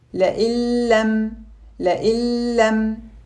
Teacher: Notice that there is no gunna in this Idgham because the letter lam is one of the letters of Idgham without gunna.